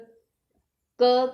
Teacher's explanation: क स्पर्श व्यंजन है और क का उच्चारण स्थान कंठ होता है, इसलिए इसे कंठ्य भी कहते हैं, कंठ्य व्यंजन।